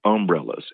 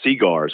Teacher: in certain parts of the South, we put a lot more stress on most of the initial syllables. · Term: stress on that first syllable